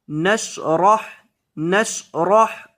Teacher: را کو موٹا کریں گے، کیونکہ را کے اوپر زبر ہے